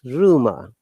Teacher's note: R should be pronounced at the beginning of a word, any word, and the last R is not pronounced.